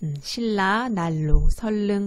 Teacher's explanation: 니은은 리을의 앞이나 뒤에서 리을로 발음한다. 유음이 아니었던 니은이 리을로 발음되는 현상입니다. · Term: 유음화